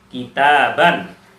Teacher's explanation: Secara tulisan ditulis dua fathah, tetapi secara bacaan dibaca dengan nun sukun di akhirnya